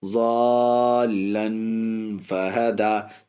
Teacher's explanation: حرف مدہ کے بعد تشدید مدے لازم کھینچ کر کے